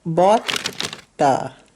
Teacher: Notice that I said bought-a. Those are linked.